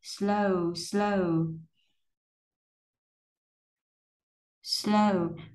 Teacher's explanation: không phải là âm o giống như tiếng Việt, mà ở đây mình có cái nguyên âm đôi là o o, vậy thì mình đọc là âm o chu miệng, xong rồi âm u hơi chu chu ra một xíu, nối âm qua là o o.